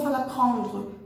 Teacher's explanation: esse R forçado da garganta que o francês usa é uma questão de accent, né? É uma questão de sotaque.